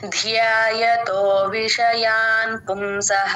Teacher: కనుక మనం దాన్ని వత్తి పలకాలి కనుక లెటర్ లేకపోయినా కూడా మనం అని మహాప్రాణం వినిపించేలాగా దాన్ని వత్తి పలకాలి